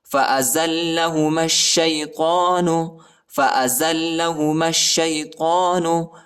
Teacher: مِنَ الظَّالِمِينَ فَأَزَلَّهُمَا الشَّيْطَانُ، زا کو لام کے ساتھ ملائیں گے، لام کو شدت کے ساتھ پڑھنا ہے، سختی کے ساتھ ، اور میم کو شین کے ساتھ ملانا ہے، ٹھیک ہے،